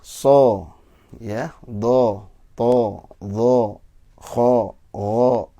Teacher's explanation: fathah itu ada yang tebal, ada yang tipis. Yang tebal itu bunyinya O, seperti so, ya, do, to, do, kho, o.